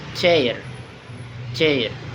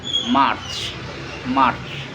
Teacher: a voiceless post alveolar or palatal